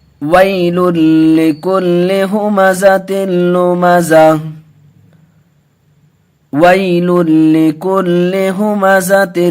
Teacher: وَيْلٌ، یہاں ادغام یرملون کا قاعدہ، لیکن دو پیش تنوین کے بعد لام آیا، لام اور را کی صورت میں بغیر گناہ کے پڑھتے ہیں ادغام یرملون میں۔